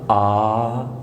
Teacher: حلق میں تھوڑی سی رکاوٹ کے ساتھ.